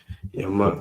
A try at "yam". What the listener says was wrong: But it's not going to be a yama. Anytime you see a ya and a ma together, I've never seen it different than yam. Yam. So like say that first part and then end with yam.